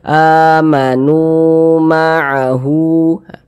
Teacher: Sebelumnya ada huruf yang memiliki tanda baca dhammah. Nah, maka huruf yang memiliki tanda baca dhammah ini dibaca panjang karena dia berposisi tepat sebelum huruf waw sukun, sehingganya nu dibaca panjang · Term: mad tabi'i